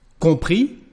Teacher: so we don't pronounce the final S.